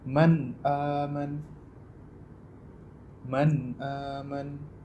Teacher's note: Jadi nun sukun dibaca secara jelas dan tanpa memanjangkan dengungnya. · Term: idhar